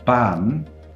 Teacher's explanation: if you say ban you can feel that your tongue touches your alveolar Ridge